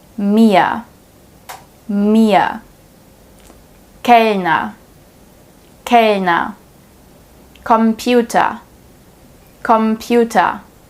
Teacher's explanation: If the R is placed at the end of the word, it's also pronounced silently.